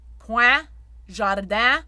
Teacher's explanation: I call the open E nasal or palatalized open E a duck quack.